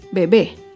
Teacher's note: Bebé es una palabra aguda. Se acentúa en la última sílaba y lleva tilde porque termina en vocal.